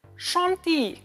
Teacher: Try to pronounce it with that French nasal sound